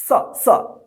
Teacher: दोनों दांत के बीच में जो जीभ आता है स, स, तब जाके इसका उच्चारण होता है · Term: दंत स